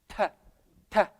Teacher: Al-hams is a whisper sound.